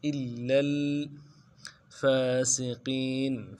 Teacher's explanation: به إلا الفاسقين علم حمزہ کو لام کے ساتھ ملانا ہے، لام کے اوپر تشدید زور دیں گے اور لام کو آگے لام کے ساتھ ملانا ہے